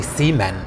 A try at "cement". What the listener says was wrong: you put the wrong emphasis on the wrong salable